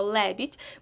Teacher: це у нас склад який ненаголошений Так коли ми говоримо Лебідь ми робимо інтонацію на першому складі тому другий не наголошений а перший наголошений Ми тільки що проговорили що ле так наголошений склад він буде